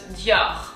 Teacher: really try to focus your emphasis on the R. And kind of have it go up.